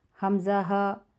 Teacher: حلق کا جو آخری حصہ ہے وہاں سے یہ 2 حروف ادا ہوتے ہیں